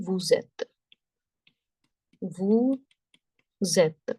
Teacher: The sound of S, when carrying forward, it would become Z.